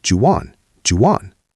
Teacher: Do you becomes ja. Want loses the T because of the next word. So do you want becomes juwan, juwan.